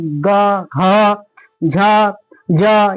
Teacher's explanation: कंपन जैसे आवाज निकलती है उसे क्या कहते हैं? घोष कहते हैं